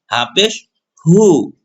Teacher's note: হা পেশ হু বড় হা ঠোঁট গোল হবে বাতাস বের হবে